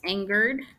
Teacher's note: he became angered angered let's see keep the E very short if it ends in e d you keep the E very short almost non-existent